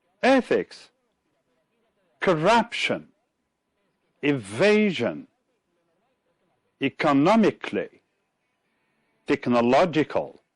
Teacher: stressed as you can see it is in bold type right in ethics it's the first syllable in corruption it's the second one in evasion it's the second one again